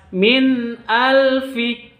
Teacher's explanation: Bukan dibaca dengung tapi dibaca jelas Min Alfi seperti itu Dan jangan juga di sentak MIN Alfi